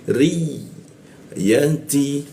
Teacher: ya bertasdid ya ada penekanan posisinya di tengah lidah